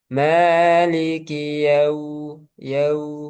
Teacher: ini wawu sukun, dia mencucu, memenyongkan kedua bibir. Jadi keadaan di mana kedua bibir monyong itu ada dua keadaan, yaitu ketika dhamma dan ketika wawu.